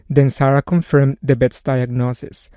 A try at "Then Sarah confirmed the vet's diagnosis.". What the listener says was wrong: Then, the word then. I heard a D instead of a voiced TH for the word then. And again, with the word vet's diagnosis, that V needs to be pronounced more like a V. I heard a B sound like ba. It needs to be a V, vet's diagnosis.